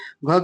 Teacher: महाप्राण तो है लेकिन अघोष नहीं है क्योंकि ये फिर सघोष में चला जाएगा इसलिए ये नहीं है